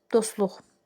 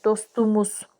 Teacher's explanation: samit gəldi deyə s-tıdan sonra t düşür, dostluq. Amma dostumuz dedikdə t düşməyəcək, d-yə keçəcək, dostumuz.